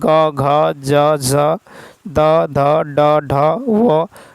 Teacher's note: जिन व्यंजन वर्णों के उच्चारण में स्वर तंत्रिका झंकृत होती है उन्हें घोष ध्वनि कहते हैं